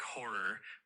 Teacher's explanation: The word horror is typically pronounced like horror with the emphasis on the first syllable.